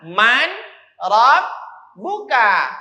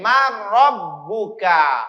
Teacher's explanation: Tapi karena dia idgham, maka bunyi dari nun dimasukkan, dileburkan ke huruf ra. Dibaca mar.